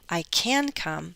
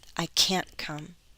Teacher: it's a cut off sound so I don't hear the same vowel length